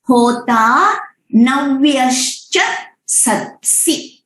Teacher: सत्सि जो है वो एंडिंग होता है लाइन का विथ ह्रस्व मात्रा, तो उसको सत्सी करके खींचना नहीं है, उसको सत्सी करके, उसको अब्रप्ट एंडिंग भी नहीं करना है, वो सुनने में प्लेजेंट होना चाहिए।